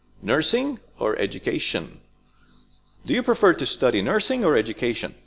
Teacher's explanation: so we have up in the beginning and then falling in the end